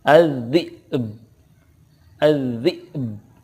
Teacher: ada qalqalahnya karena ba sukun qalqalah